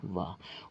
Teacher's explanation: वा ध्वनि हमारी दांत और ओष्ठ से उच्चारित होती है संयुक्त रूप से, तो इसी ध्वनि को हम लोग दंत्योष्ठ ध्वनि के नाम से जानते हैं।